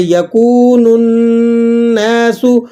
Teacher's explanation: واو ساکن ہے اور کاف پر پیش ہے تو آپ نے اس کو واو مدہ کو ایک الف تک لمبا کر کے پڑھنا ہے